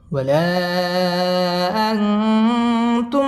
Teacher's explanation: তুম মিম সাকিনে ইজহারে খাস গুন্না ছাড়া পড়তে হবে , তুম আ মধ্যে তবাই 1 আলিফ টেনে পড়তে হবে, আবিদু